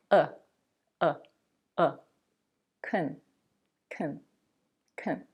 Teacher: The first syllable of both words is pronounced the same way. The syllable is unstressed, and that's why the vowel is reduced to the schwa, the most relaxed and neutral vowel in English.